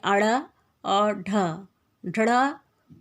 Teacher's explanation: इसी प्रकार उच्छिप्त व्यंजन जो है उसमें जीभ ऊपर उठकर पहले मूर्धा को स्पर्श करती है, फिर तुरंत झटके से नीचे गिरती है